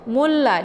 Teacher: ditekan mu-nya langsung dileburkan suaranya ke la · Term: idgham syamsiyah